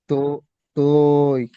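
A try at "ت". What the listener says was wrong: তো এ নয়, এটা আগেকার মানুষ পড়তো, আমাদের বাপ চাচারা যারা পড়েছেন পুরোনো জামানা, তো এ পড়তো তারা। এখন আমরা ঠিক করে সুন্দরভাবে উচ্চারণ করবো, মারুফ পড়বো। ত, কি পড়বো? ত।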